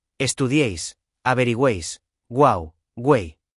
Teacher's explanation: Su estructura es siempre fija, vocal cerrada y vocal abierta, que es tónica, y vocal cerrada. La vocal abierta del medio es la que lleva la fuerza de voz. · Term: triptongo